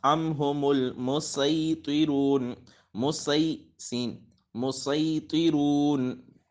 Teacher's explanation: ام ہم المسیطرون، لیکن جب سین پڑھیں گے تو وہ حروف صفیریہ میں سے تو ہے لیکن حروف مستعلیہ میں سے نہیں ہے، اس وجہ سے اس کو صرف مثلا اس میں صرف سیٹی کی آواز نکلے گی، اس کو پر نہیں پڑھنا